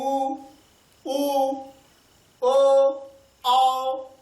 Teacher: जब ऊ का उच्चारण हम लोग करते हैं तो ओठ जो है वृत्ताकार हो जाता है, आप भी बोल कर देख सकते हैं ऊ, ठीक है। इसके साथ ऊ, ऊ, ओ, औ, तो यहां पर ओठ की स्थिति क्या होती है, वृत्ताकार हो जाती है।